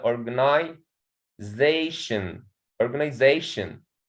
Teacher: is a scandaly stress okay here in the first syllable and on the fourth syllable there is a primary stress